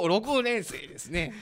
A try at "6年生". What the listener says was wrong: 6 年 な ん で そ ん な な ん か 微 妙 な イ ン ト ネ ー シ ョ ン つ け て く る ん で す か 。